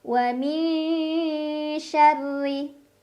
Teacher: Ra dibaca secara tarqiq karena ra berbaris kasrah, jadi dibacanya tipis, pangkal lidah datar.